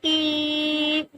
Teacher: ای کو ہمیں ایک الف کی مقدار کھینچنا ہے کیونکہ کھڑی حرکات ہے